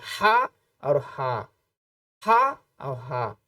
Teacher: ہا کی ادائیگی جب آپ کریں گے تو آپ کے حلق سے آپ کا جو کنٹھ ہے یہاں سے اگر آپ ادائیگی کریں گے تو بڑا ہا یعنی ہا، اور اگر چھوٹے ہا کی ادائیگی کریں گے تو آپ لمبی سانس لیں گے، آپ کی ادائیگی تھوڑا اور اندر یعنی پیٹ سے ہوگی، ہا ہا ہا، اور بڑا ہا یعنی حلق سے ہا اور ہا، ہا اور ہا۔